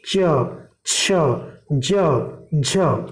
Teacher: अब चैबर को स्पर्श संघर्षी इसलिए कहा जाता है, स्पर्श तो है ही, संघर्षी क्योंकि इनके उच्चारण में संघर्ष करना पड़ता है, जैसे च, छ, ज, झ, इस तरह ये स्पर्श संघर्षी वर्ण है।